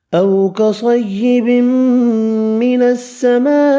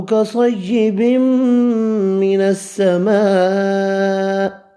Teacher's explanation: او کصیب من السماء، او واولین ہے، کصیب صاد حروف مستعلیہ ہے، پر پڑھیں گے